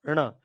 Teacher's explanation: यानी जीभ का अग्र भाग मृद को छुएगा भी। और वायु नाक और मुख दोनों से बराबर निकलेगी। यानी कह नावायु नाक से भी निकलेगी और मुख से भी निकलेगी और जीभ का अग्र भाग मूर्धन को भी छुएगा यानी ण आएगा।